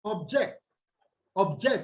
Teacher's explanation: adjective in most cases it's stressful what the first syllable but if it is a verb it is stressed on what on the second syllable which is the last syllable